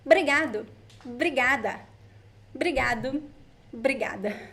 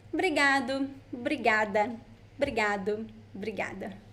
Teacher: when we speak fast, most of the times we drop the first O sound. So we say Obrigado, obrigada, obrigado, obrigada.